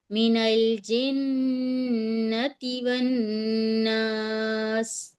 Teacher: ती पे बिल्कुल नहीं खींचे, ती पे बिल्कुल नहीं खींचे, रुक जाएं। अगर आपसे आगे नहीं आ रहा तो रुक जाएं, आप खींचे नहीं, ती नहीं कहें।